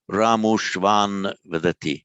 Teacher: the ah plus ah merges to o